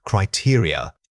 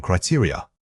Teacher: this word has an important stress pattern starting on the second syllable. It is not a single stressed unit.